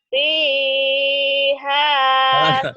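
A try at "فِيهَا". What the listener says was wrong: Jangan kepanjangan. Fiha. Jangan kepanjangan. Satu alif aja. Fiha. Panjang banget.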